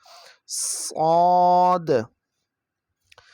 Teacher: صاد میں بھی سیٹی کی بھی آواز آئے گی اور اس کو موٹا بھی کر کے پڑھیں گے